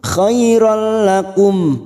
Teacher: nun sukun atau tanwin yang bertemu dengan huruf lam dan ra hanya masuk tanpa mendengung. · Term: idgham bila gunnah